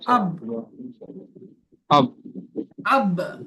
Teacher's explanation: বার উপরে সাকিন, আর বা উপরে সাকিন যুক্ত সাকিন, করে আগের প্রশ্ন মিল করতে হয়। আর বার উপরে সাকিন, তাই বাকে কলকলা করে, কলকলা করে আগের অক্ষরের সাথে মিলিয়ে পড়তে হবে।